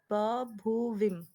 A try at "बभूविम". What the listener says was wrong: बभूविम नहीं, विम bar वाला विम नहीं बोलना है। बभूविम, बभूविव, ठीक है, पूरा का पूरा आना चाहिए।